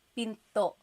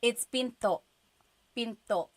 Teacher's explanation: Do you hear the glottal stop when I say pinto?